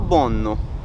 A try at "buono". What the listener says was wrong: buono, No, one and buono. Buono. No, one and buono. No, not double N.